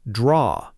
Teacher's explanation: Draw ends softly, almost like draw. No strong R sound at the end in British English, though American English does pronounce that final R more clearly.